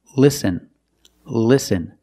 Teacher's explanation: a word before a vowel that's a light l listen listen the tongue is touching the roof of your mouth right behind the teeth